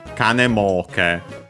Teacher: The accent becomes kanemoke. So yeah, the accent is on the mo. So the first mora of the second word part of the compound